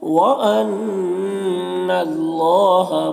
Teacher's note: نون مشدد غنہ ہوگا اور یہاں پر اللہ کلام کو پر پڑھیں گے، کھڑا زبر ایک الف کے برابر کھینچیں گے.